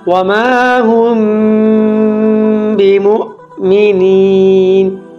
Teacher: মিম সাকিনের পরে বা যদি আসে তাহলে গুন্না সহ ইখফা করে পড়তে হয়।